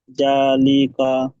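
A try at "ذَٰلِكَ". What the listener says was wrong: তাহলে টানটা কথা হবে, জাল খাওয়া যাওয়া যা, জালিকা, জালিকা। জালের উপরে খাড়া জাবার এসছে, খাড়া জাবার আলিফ মাদ্দার সমতুল্য, কি বলবো যখন খাড়া জাবার আসবে, কি বলবো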